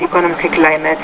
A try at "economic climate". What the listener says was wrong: Economic climate there, that's a word stress issue.